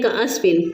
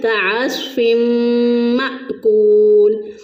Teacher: صاد کے بجائے سین اور عین کے بجائے حمزہ پڑھ دیتے ہیں